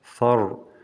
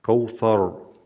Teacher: Когда перед ро с сукуном стоит а, эту ро произносим твердо. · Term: твердое ро